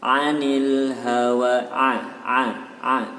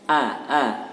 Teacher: Kalau huruf ain itu bibirnya tidak terbuka lebar, biasa a. Tapi kalau huruf hamzah maka terbuka lebar, a.